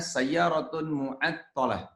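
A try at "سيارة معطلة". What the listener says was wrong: Li'anna sayyarah mu'attalah. Ya, sayyarah ya. Kalau di harokatnya disukunin aja. mu'attalah.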